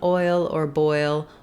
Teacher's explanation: So I've just rewritten it here for you with the letters oy, so you can think about the oi diphthong. So the oi starts rounded and it ends unrounded, meaning that as I make this sound, I'm gliding between two positions of my mouth. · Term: diphthong oi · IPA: ɔɪ